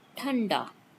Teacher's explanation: it is a stop, voiceless, aspirated